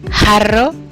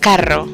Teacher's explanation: The back of the tongue comes close to the velum to constrict the airstream and cause turbulence.